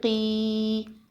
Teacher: یا ساکن ہو اور اس سے پہلے کسی حرف کے نیچے زیر ہو تو یا مدہ بن جاتا ہے۔ یا مدہ کو ایک الف کے برابر کھینچ کر پڑھتے ہیں۔